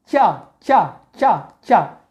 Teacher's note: इनके उच्चारण के स्थान में जिह्वा का अग्रभाग है वो मुड़ करके तालु में स्पर्श हल्का सा होना चाहिए, जैसे ई। और इसी प्रकार से च च च च, जिह्वा ऊपर जाती है, च च छ ज झ य, और फिर इसी प्रकार से य श, इस प्रकार से उच्चारण करना है।